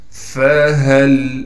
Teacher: فہل، فا کو صاف کر کے پڑھیں گے، ہا کو سینے سے نکالیں گے یعنی گلے کا وہ حصہ جو سینے کی جانب ہے